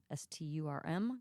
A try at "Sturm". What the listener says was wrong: No, the R is after the U.